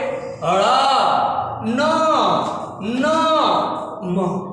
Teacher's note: नासिक व्यंजन, जो नाक से बोले जाते हैं